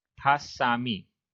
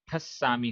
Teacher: संयुक्त अक्षर से पूर्व जो दीर्घ स्वर है, बड़ा स्वर है, वो ह्रस्व हो जाता है, छोटा हो जाता है।